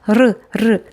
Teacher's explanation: 발음할 때 공기가 양 옆으로 흐르는 소리